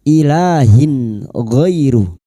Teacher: Bunyi kasr tanwin atau kasrottain dibaca jelas tanpa mendengung. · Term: izhar halqi, idhar halqi